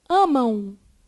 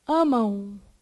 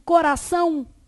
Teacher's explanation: Ditongo nasal é pronunciado pelo quê? Nariz. Então, esse daqui é pronunciado pela boca e o outro é pronunciado pelo nariz.